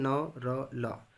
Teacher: हमारा तालू का जो 3 भाग में बताया हूँ, सबसे पहला भाग जो है सामने वाली भाग कठोर तालू कहलाता है, बीच वाला भाग मूर्धन्य कहलाता है, मूर्धा कहलाता है, और जो अंदर वाली भाग है तालू का उसको कोमल तालु कहते हैं। तो सामने वाले तालु का जो सामने वाली भाग है उसको हमारे जीभ की ऊपरी हिस्सा, ऊपरी जो नोक है वो स्पर्श करता है, इसको हम बोलते हैं न र ल। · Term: वत्स